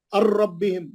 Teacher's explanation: नून नहीं पढ़ेंगे, रा में जाएंगे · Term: इदगाम बिला गुन्ना